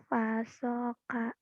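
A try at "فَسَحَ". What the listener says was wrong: Fasoha. Hanya jadi ka kamu ya. Fasoha. Fasoha. Fasoha.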